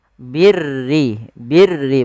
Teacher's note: huruf ro yang dibaca dengan tipis Yaitu ro tarqi yang di mana huruf rnya berharakat dengan berharakat